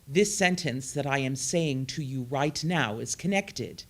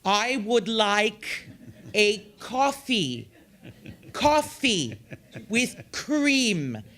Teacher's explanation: you can hear all of the consonants but they are connecting one to the other and so it sounds smooth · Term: legato